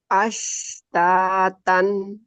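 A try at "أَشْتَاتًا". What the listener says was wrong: Agak monyong tuh ya.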